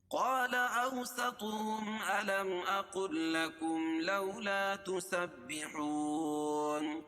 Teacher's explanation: قاف کو موٹا پڑھیں گے کیونکہ حروف مستعلیہ میں سے ہے، اور الف سے پہلے قاف کے اوپر زبر ہے تو الف مدہ.